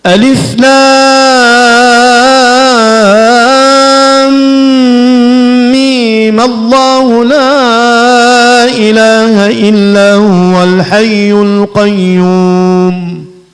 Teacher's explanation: أما الوجه الثالث وهو قصر الميم حركتين مع الفتح والوصل. أقول ألف لام ميم الله لا إله إلا هو الحي القيوم.